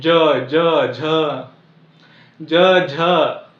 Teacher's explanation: कोणता वर्ण येतोय किंवा कोणता प्रकार येतोय तालव्यामध्ये ज टाळ्याकडे पाठीमागे दात त्याला लगेच लागून चिटकत नाही थोडीशी पाठीमागे टाळ्याला चिकटते